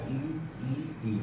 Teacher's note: अग्र भाग तालु से टच हो रहा है।